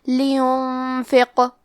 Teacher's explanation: قاف حروف التفخیم میں سے ہے، تو ہم یہ حرف کو موٹی آواز میں پڑھیں گے، اور کیونکہ اس پہ جزم ہے تو ہمیں قاف کو قلقلہ سے پڑھنا ہے. قلقلہ کا معنی ہے حرف ساکن کو ہلانا، تو ہم حرف القاف کو ہلاتے ہوئے یہ کلمہ کو پڑھیں گے